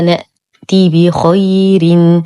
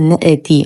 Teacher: نسكن الهمزة وننتبه أنه حرف شديد مجهور لا نحركه ولا نقلقله، فلا نقول نأتي وهذا خطأ.